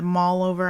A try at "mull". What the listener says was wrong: Mall? Mole. Mole. You're saying it mall, like going to shopping mall. Mole.